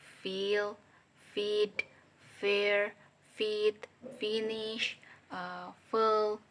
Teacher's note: voiceless labiodental fricative sound fa